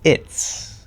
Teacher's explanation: So we sort of kept the T, changed the Z into an actual S sound. It changes into an S.